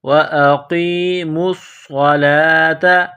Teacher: میم کو صاد کے ساتھ پلس کرنا ہے، صاد کو موٹا کرنا ہے، سیٹی کی آواز پیدا کرنی ہے